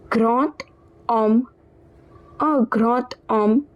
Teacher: So in this case, this D, it will be pronounced as T. So we'll pronounce the entire word as grand homme, or grand homme instead of grand homme.